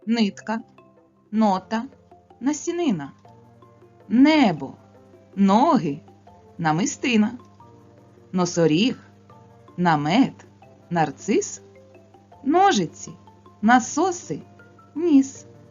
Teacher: звук н твердий приголосний та звук нь М'який приголосний